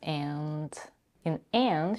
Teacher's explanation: she reduces the vowel to a schwa, drops the d sound, and connects with having